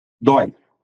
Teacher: Monossílabo tônico terminado em I não tem acento, que é só A, E, O. Só que dói tem um ditongo aberto, oi. Ele é tônico. Então, ó, acento no dói.